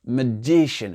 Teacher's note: Il n'a pas dit magician. Non, le MA, là, il a été réduit.